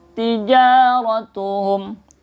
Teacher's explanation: tija ini namanya mad tabi'i juga dibaca panjang. Ratuhum mim sukun bertemu waw, ini namanya izhar syafawi, jelas ya.